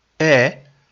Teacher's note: the first sound is a vowel sound, air. So the word is not hair.